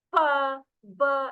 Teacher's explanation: the upper lip and the lower lip in in complete contact with each other